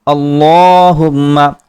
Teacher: لام کے اوپر کھڑا زبر ہے جس کی وجہ سے ہم لام کو پر کریں گے۔ اللہم، میم مشدد پر ایک الف کے برابر غنہ کیا جاتا ہے۔